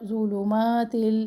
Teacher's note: فی یا مدہ، ظلمات، اب یہاں پر بھی 2 پیش اکٹھے ہیں، دھیان رکھے دونوں پیش میں سے کوئی بھی پیش مجہول نہ ہو، دونوں کو ہونٹوں کی گولائی سے ادا کرے